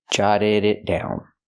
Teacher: The T in it is a stop T before the consonant.